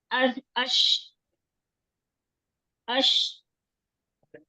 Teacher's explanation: शीन की अदायगी भी उसी तरह ही, ये जुबान है और क्या है, जुबान का दरमियानी हिस्सा जो है ना ऊपर तालू की तरफ उठता है। ये तालू फर्ज करें, जुबान उठी ऊपर शीन के लिए, इसके दरमियान से हम जो है सांस जो है वो बाहर निकलेगी।